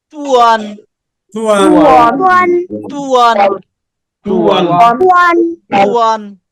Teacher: তর উপরে পেশ ঠোঁট গোল আবার ওয়াও ঠোঁট গোল তার মানে পুরোটাই ঠোঁট গোল অবস্থায় হবে